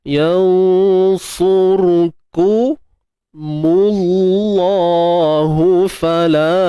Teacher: Kalimah Allah ni tuan-tuan puan kita baca tebal, sebab sebelumnya baris depan kan tebal